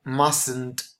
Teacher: This is the contracted form, but remember that in the negative you don't pronounce the T.